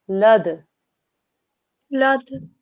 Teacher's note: Now this dal, okay, at the moment it has a kasra, but when we pause, a rule that you'll get taught is that this will become a sakin dal. And so there's going to be a qalqala sound there because actually dal is one of those qalqala letters